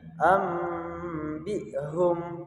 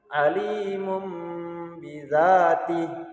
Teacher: bunyi tanwin atau bunyi nun sukun itu diganti menjadi mim sukun